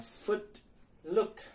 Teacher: itu u-nya pendek, ada di belakangnya, ada di back itu lidahnya